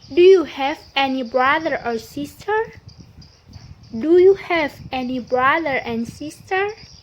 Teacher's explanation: The sentence stress here is have.